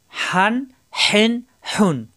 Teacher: প্রত্যেকবার কণ্ঠনালীর মাঝখানে চাপ দিয়ে উচ্চারণ করতে হবে।